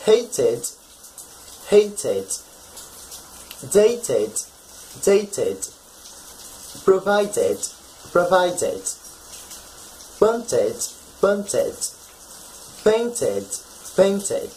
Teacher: those verbs that end with a T or D sound, they must have the pronunciation of the ed ending when in the past as id